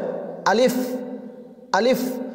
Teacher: প্রথমে আলিফের মাখরাজ, মুখের খালি জায়গা হইতে উচ্চারিত হয়